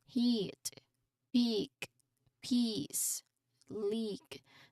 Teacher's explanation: I want you to really focus on that long sustained e sound for each word keep your lips spread wide